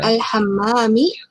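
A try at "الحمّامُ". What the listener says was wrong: Ini sangat mudah sekali, tapi kadang-kadang ya, karena tidak terbiasa ataupun lupa, harusnya al-hamamu ya menjadi al-hamami, ini lumrah gitu.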